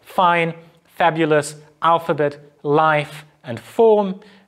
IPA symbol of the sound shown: f